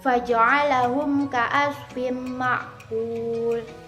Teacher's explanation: Cara bacanya adalah memasukkan atau mentasdidkan ke dalam huruf idgham bil ghunna dengan mendengung. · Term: idgham bi ghunna